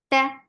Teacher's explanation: Ta is very sharp, no flow of sound.